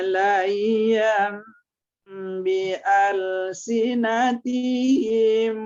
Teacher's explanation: Jadi waktu membaca yamnya itu bibir kita terkatup karena ba-nya huruf bibir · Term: iklab